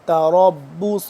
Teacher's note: تا باریک را پر کر کے پڑھیں گے را با زبر رب با پیش بو تربص صاد پیش سو